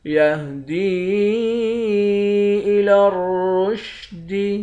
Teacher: دال کو یا کے ساتھ ملا کر یا کو ایک الف کے مقدار کھینچیں گے۔ اس یا پر مد ہے، اس مد کو 3 الف کے مقدار کھینچ کر پڑھتے ہیں۔